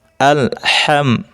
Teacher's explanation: মিম সাকিনের বামে বা মিম ব্যতীত বাকি হরফ আসিলে মিম সাকিনকে গুন্না ছাড়া স্পষ্ট করে পরিতয়। ইহাকে ইজহারে খাস বলে।